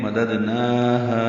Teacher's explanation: ہا الف مدہ ہے تو نون اور ہا دونوں کو 2 حرکات لمبا کریں گے